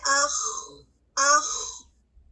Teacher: خواہ کی ادائیگی میں آواز جاری رہتی ہے